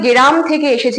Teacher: এখানে আমরা দেখতে পাচ্ছি যে মাঝখানে একটা স্বরধ্বনির আগমন হয়েছে এখানে গ এর যে রফরাটা আছে গ এর রফরাটা এখানে যুক্ত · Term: স্বরভক্তি